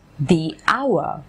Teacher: the word our is pronounced with a vowel sound ah hence we say the our